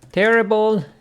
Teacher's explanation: terrible with the stress on the first syllable